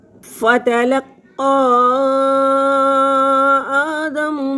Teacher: حروف مدہ پر لفظ ختم ہو گیا۔ اگلا جو لفظ ہے وہ حمزہ سے شروع ہو رہا ہے، تو مد منفصل ہے، 3 سے 5 الف تک اس کو لمبا کریں گے۔